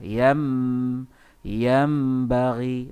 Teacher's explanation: Yam, mulut tu, bibir tu ditutup depannya. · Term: iklab